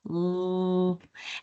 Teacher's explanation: we have L, where the tongue is on the ridge behind our teeth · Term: liquid sounds